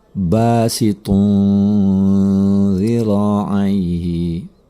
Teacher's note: Ada tanwin bertemu dengan huruf zal. Ini adalah ikhfa. Maka cara membacanya adalah dengan mendengungkannya selama 2 harokat.